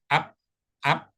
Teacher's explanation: enggak ada napas yang keluar